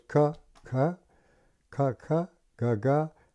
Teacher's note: One, the vocal cord, ka, no vocal cords. So you say ga, you can feel the vocal cords move.